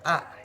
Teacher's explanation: dihasilkan dengan mulut terbuka lebar dan lidah terletak rendah di dalam rongga mulut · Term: huruf vokal A